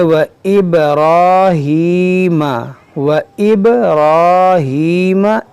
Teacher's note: बा में कलकला होगा, रा को पूर यानी मोटा पढ़ेंगे और खींचेंगे एक अलिफ के बराबर